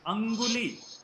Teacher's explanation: anguli ga will come from the throat. So the nasal sign should come from the throat